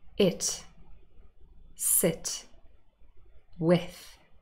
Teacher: So it's really short, it's more relaxed, and it isn't a long sound. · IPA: /ɪ/